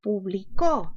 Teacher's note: La mayor fuerza está en la sílaba co